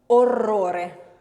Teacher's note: We have the double R for the roll and the single R between the two vowels being flicked. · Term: voiced trill dental